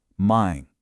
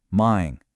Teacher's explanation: Push a little bit of air through your nose as you finish the word. "Mine". Do you feel that hum? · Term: nasal sound